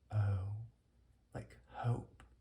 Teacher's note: The O with a drop at the end to make it a more enclosed vowel.